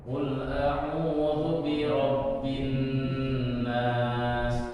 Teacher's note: Nah, ketika ada nun bertasdid, sementara huruf nun itu adalah huruf gunnah. Nun tasdid itu ada termasuk huruf gunnah, maka cara membacanya pun harus disertai dengan gunnah.